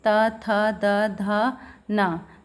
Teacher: उसी प्रकार जो है ता वर्ग है, जैसे कि त, थ, द, ध, न, तो इनको अगर हम बोल रहे हैं तो जो हमारी जीभ है वो दांतों को स्पर्श कर रही है